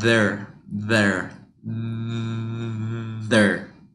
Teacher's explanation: make sure you have the shape of your mouth your tongue has to be in between your teeth